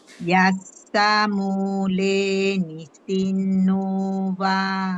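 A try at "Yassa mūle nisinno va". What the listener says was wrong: Yeah, perfect.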